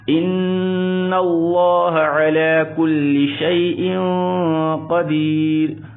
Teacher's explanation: لفظ اللہ کے لام کو پر پڑھیں گے موٹا پڑھیں گے